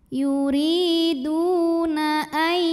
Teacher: Yuriduna ai ada idgham bil gunnah karena nun sukun bertemu ya, maka nun sukun masuk dulu ke ya, ai disertai bunyi dengungan tahan.